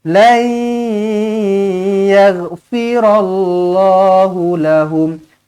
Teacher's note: nun kosong bertemu dengan ya, idgham ma'al gunnah, jumpa dengan huruf ya, senyum.